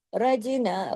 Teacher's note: खा को तो जमाओं के साथ पढ़ा, उसको नहीं हिलाया, लेकिन जीम को हिला दिया, कलकला कर दिया